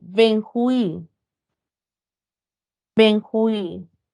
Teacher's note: Benjuí recae en la última sílaba, la U con la I siempre se mantiene unida. Y al tener la mayor fuerza de voz en la última sílaba, es una palabra aguda que termina en vocal.